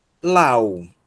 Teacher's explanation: esse ditongo aqui nós vamos pronunciar como AU. E o acento está no U. Então, a sílaba tônica, aliás, o acento recai na segunda vogal, tá?